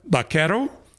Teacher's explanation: The Castilian V, the letter V, almost had the letter B sound. So you have vaquero, buckaroo, okay?